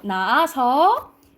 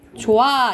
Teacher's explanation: 뒤에 모음으로 시작하는 어미나 접사가 오면 히읗이 탈락된다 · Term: 히읗 탈락